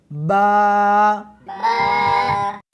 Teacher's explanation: اس حرف کو دونوں ہونٹوں کے ساتھ ملا کر پڑھیں گے